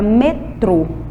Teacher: Na palavra metrô, o som mais forte é o trô. E como ele fica bem na última sílaba, que está até com a corzinha mais forte para vocês observarem aí a tela, ela é considerada uma oxítona, porque a sílaba tônica, a sílaba mais forte, está na última posição.